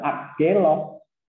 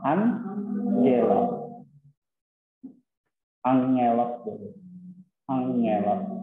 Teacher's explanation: kalau bunyi gamma atau alfabet gamma ini diikuti oleh gamma, kappa, ki, dan si, maka diucapkan jadi n. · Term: Gamma nasal